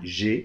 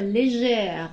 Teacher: on ouvre le E et on prononce le R